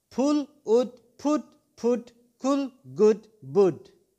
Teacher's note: It arises from double O and U. Tongue position is high back, lips shape rounded.